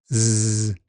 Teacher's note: The voice box vibrates throughout. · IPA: /z/